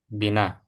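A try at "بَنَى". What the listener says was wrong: Di situ bana ya, bukan bukan bina. Bana dan itu bukan isim, bukan isim. Tidak ada tanda isim di sini. Ya, dia fi'il.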